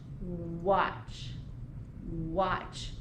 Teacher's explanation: Do you feel any air on your hand? I don't. So I know it doesn't begin with the WH, but it does begin with the letter W, doesn't it?